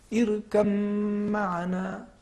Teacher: لفظ یہ ہے دیکھیے ارکب معنا, جی, تو یہاں پہ چونکہ حرف با اور حرف میم کا مخرج ایک ہی ہے, دونوں ہونٹ سے ادا ہو رہے ہیں, لہٰذا یہاں پہ ہم ادغام کریں گے اور پڑھیں گے ارکب معنا, حرف با کو تلفظ نہیں کریں گے. اگرچہ یہاں پر کہا جاتا ہے کہ اگر ہم ادغام نہ کریں اظہار کریں تب بھی جائز ہے, لیکن ادغام کرنا زیادہ بہتر ہے.